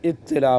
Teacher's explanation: میں آیا ہے، تو اس میں عربی کا قاعدہ ہے کہ قریب المخرج ہونے کی وجہ سے تا کو طا بنا دیا تو مدغم ہو گیا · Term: ادغام